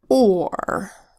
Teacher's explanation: there is such thing as a are controlled vowel sound where the R is so strong that it changes the vowel sound a little bit